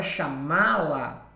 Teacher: chamá-la, esse má é sílaba tônica, é sílaba forte